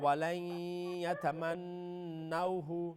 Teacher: الرحمن الرحیم، وَلَن يَتَمَنُّوهُ نہیں وَلَن ادغام تو کیجئے نا، نون ساکن کے بعد یا یرملون کا ہے، نون کو یا کے ساتھ مرج کرے